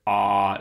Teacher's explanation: AA you keep it back but you lower it ah so it's a low back vowel and you're nowhere near the palate anymore you're closer to the pharynx